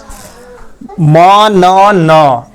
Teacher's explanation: नासिका का प्रयोग होता है इसमें यानी कि नाक से हवा निकलता है